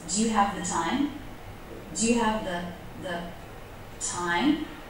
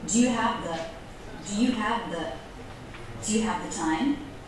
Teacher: Do you see how the word the is low in pitch?